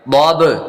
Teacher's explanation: ضاد با زبر ضاب ضاد حروف مستعلیہ میں سے پر کریں گے با قلقلہ کریں گے